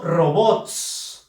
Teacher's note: la fuerza de voz está en la sílaba bots, que es la última sílaba